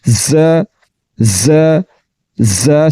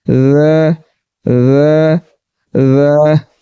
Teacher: ز ز ز سیٹی کے ساتھ اور باریک، ذ ذ ذ باریک اور بغیر سیٹی کے